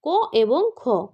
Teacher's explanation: প্রথম দুটি ধ্বনি হল অঘোষ ধ্বনি